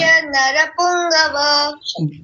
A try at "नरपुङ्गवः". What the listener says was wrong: पुंगवः, विसर्ग को भी बोलिए।